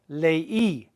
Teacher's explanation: It's not lei, it's leí. We're putting an accent mark on the I to make that I just as strong as the E so that you hear them both equally. Leí, I read.